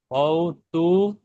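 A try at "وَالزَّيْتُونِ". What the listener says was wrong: ওয়াও তু নয়, ওয়াতু, ওয়াতু। নুন ইয়াসের, নুন ইয়াসের। ওয়াতুরি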